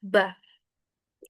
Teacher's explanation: Ini mengatup ba ee dirapatkan tetapi tidak masuk ke dalam hidung. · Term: huruf ba